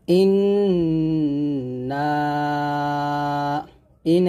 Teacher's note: ইন এখানে অবশ্যই গুন্না আদায় করতে হবে